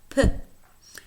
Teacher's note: First, we have the voiceless bilabial stop